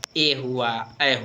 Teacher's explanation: ये कंठ तालु दोनों से बोला जाता है